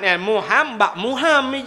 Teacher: 'muham' yang memiliki tashdid, ghunnah, bunyi sengau